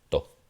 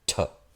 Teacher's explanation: es la T y luego con aspiración, que es este aire que se expulsa.